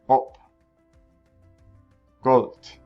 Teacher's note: the o sound is much like the long o in english except for shorter